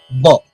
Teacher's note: दोनों होठ पूरी तरह आपस में मिलते हैं और अचानक खुलते हैं